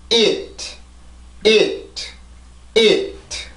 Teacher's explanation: 그냥 혀를 내가 치조해서 떼지 않고 그 다음으로 바로 넘어가면 되고 혀를 떼줄 거면 it 강하게 눌리는 게 아니라 살짝 닫고 나서 그냥 바로 열려주면 지금 남아있는 공기만 이용해서 소리를 만드는 게 돼요